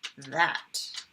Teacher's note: It's a buzzing, voiced one.